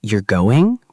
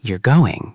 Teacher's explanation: if I say, you're going, with a rising intonation, it's a question. But if I say, you're going, with a falling intonation, it's a statement.